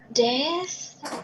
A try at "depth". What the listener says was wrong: Yeah, depth. But you got to close your mouth for the P, right? Depth. You got to close your mouth. Depth. And then once you're at the P, then you can go with the depth. Depth. Depth. Depth. Depth.